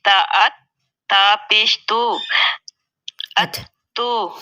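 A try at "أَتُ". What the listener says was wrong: اچھا حمزہ پیش نہیں ہے، حمزہ کے اوپر زبر ہے، ٹھیک ہے، فتحہ ہے.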